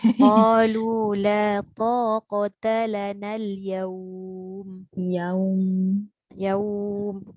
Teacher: Dia jangan masuk hidung yaum.